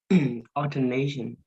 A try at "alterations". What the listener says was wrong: alterations. Alterations. There's no N.